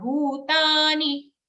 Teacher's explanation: Here again the dantya ni, dental ni in bhutani is again short.